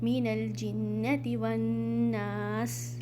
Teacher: नून को स्ट्रेच करना है, हरकतैन करना है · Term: अलिफ मद्दिया